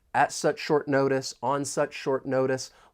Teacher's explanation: When pronouncing this phrase, and this is more specific to the American accent because I am from the United States, the T and notice, I am going to pronounce that as a flap T. It's going to sound more like a soft D.